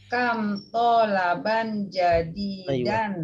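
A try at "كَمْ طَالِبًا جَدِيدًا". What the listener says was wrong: toliban ya, bukan tolaban tapi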